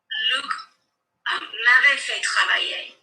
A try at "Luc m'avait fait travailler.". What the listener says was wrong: Correct, but can we now pronounce it without stressing the adverb, sorry, without stressing the auxiliaries, as we've just told our friend Calvin?